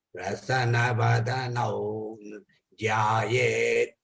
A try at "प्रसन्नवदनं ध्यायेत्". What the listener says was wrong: Prasannavadana, prasanna, you have to say 2 times. Na is 2. Prasannavadanam dhyayet.